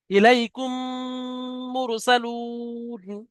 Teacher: মিম সাকিনের পরে মিম এসছে, ওই জন্য করে এই মিমটা এই মিমের সাথে মিলিয়ে একালি পরিমাণ গুণনা করে পড়তে হবে, একে ঈদগামে সাফাবি বলা হয়।